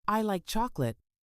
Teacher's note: in the sentence, I like chocolate, the word chocolate is stressed. If you said it as I like chocolate, it wouldn't sound as natural.